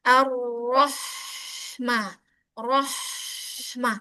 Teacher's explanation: ringankan bunyi ha jangan sampai ngikut tebal ke seperti roh · Coba ar-roh. Jadi saat roh tebal ke H itu sudah tipis.